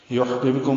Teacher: ہا ساکن پہ ہمس ہے، بب میں با ساکن پہ قلقلہ ہے، کم میں میم ساکن تھا لیکن آگے لفظ اللہ کا حمزہ عارضی ہونے کی وجہ سے ملا دیا گیا.